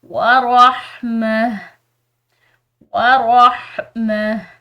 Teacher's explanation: یہاں پر جو ہے یہ ہا باریک یعنی کہ حلقیہ پڑھی جائے گی